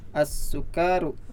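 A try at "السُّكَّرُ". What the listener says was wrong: Iya, kafnya pendek ya dan bertasdid. As-sukaru.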